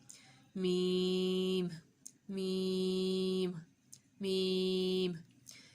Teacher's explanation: میم کا مخرج ہے بند ہونٹوں کے خشک حصے سے